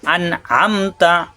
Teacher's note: আন নুন সাকিনের পরে আইন স্পষ্ট হবে, গুণ্য হবে না